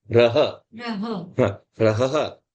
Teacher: You also pronounce the visarga as ha